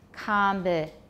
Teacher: So with a question, combinations, the tonic will be low and rising. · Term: yes-no question rise